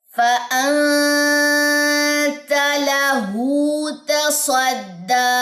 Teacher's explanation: تا باریک لیٹر ہے، ٹھیک ہے، اور سواد جو ہے یہ موٹا لیٹر ہے، اور دال بھی باریک لیٹر ہے